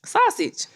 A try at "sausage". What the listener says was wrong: You say it with an O. Say it again.